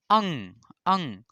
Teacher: नासिका जिसे बोलने में मुख और नाक दोनों से हवा निकले